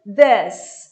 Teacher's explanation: e curto, como se fosse um E fechado